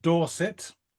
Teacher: you hung on that R when you said Dorset, and the only place I know that really does that a lot is sort of that area of England. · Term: rhotic